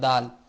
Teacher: جب زبان کی نوک اوپر کے اگلے 2 دانتوں کی جڑ کی طرف والے آدھے حصہ سے لگے، جب زبان کی نوک اوپر کے اگلے دو دانتوں کی جڑ کی طرف والے آدھے حصہ سے لگے تو دال ادا ہوتا ہے. یعنی کہ اگلے دو دانتوں کے پیچھے جب زبان لگتی ہے تو دال ادا ہوتا ہے